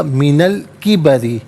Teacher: وقد بلغت، من علیحدہ، الکبری علیحدہ ہے، نون پر زبر آئے گا ملا کر پڑھنے کی صورت میں، اس سے الکبری کی لام ساکن کے ساتھ ملائیں گے، درمیان میں سے الف یعنی حمزہ کو حذف کیا جائے گا